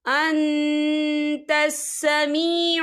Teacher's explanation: یا دیکھیں ان یہاں نون ساکن ہے، نون ساکن کے بعد تا آ رہا ہے، اور تا جو ہے اقفا کا ورڈ ہے تو ہم یہاں اقفا کریں گے، نون ساکن کی آواز کو ناک میں چھپائیں گے